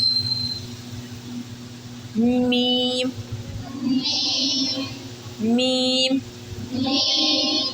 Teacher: अब हम मीम कैसे अदा करेंगे, ये अपने बाहर वाले जो होंठ है ना हमारे, इनको मिलाने से अदा करेंगे।